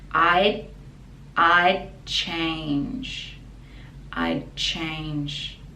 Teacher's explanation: this is short for I would change and I'd the pronunciation we don't really pronounce the d but the tongue has to stop at the top of the mouth